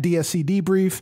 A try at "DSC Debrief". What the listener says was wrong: DSC Debrief. I thought you said E.